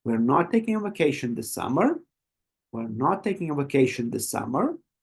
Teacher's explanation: feel how the voice Rises up at the end